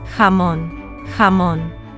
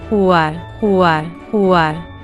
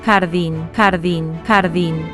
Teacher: The back of your tongue rises up toward your soft palate. That is the soft part at the very back of the roof of your mouth. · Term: Spanish J